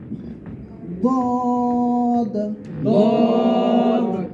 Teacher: জিহ্বার গোড়ার কিনারা উপরের মাড়ির দাঁতের গোড়ার সঙ্গে লাগাই যায়। জিহ্বাটাকে অটোমেটিক ভিতর দিকে টান দিবেন, দেখবেন জিহ্বার গোড়া ওখানে লেগে যাবে।